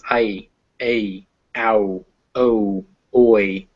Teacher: these are normal vowels but at the end they close up before you get to the consonant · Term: double vowels